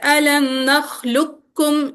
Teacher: نحلکم علم نخلقکم نخلقکم، ہاں جی، ڈائریکٹ ہم باریک والا کاف پڑھیں گے، الم نخلقکم، لکم موٹا والا قاف بالکل نہیں آنا چاہیے کیونکہ ادغام تام ہے، ادغام تام میں مدغم اس میں اس صفت کی نہیں آواز نہیں باقی آئے ہے، گی۔